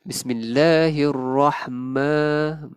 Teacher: So dia dinamakan mad asli. Bacaannya adalah 2 harakat.